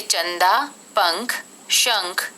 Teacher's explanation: अनुस्वार इसका उच्चारण नाक से होता है यह न या मां के समान होता है जैसे चंदा पंख